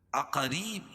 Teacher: یا ساکن سے پہلے زیر ہو تو یا مدہ، اس کو ایک الف کے برابر کھینچ کے پڑھیں گے